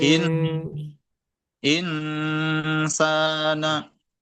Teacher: Nunnya cukup samar saja, jangan sampai ke eng, karena yang suara kol-kolah eng itu hanya untuk dua huruf, yaitu huruf kaf dan huruf kof. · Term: nunnya samar